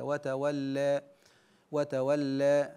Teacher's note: تقريب الالف من الياء والفتحه من الكسره كثيرا اقول وتولي وعندنا درجه بينهما بين الفتح والاماله الكبرى وهي الاماله الصغرى او التقليل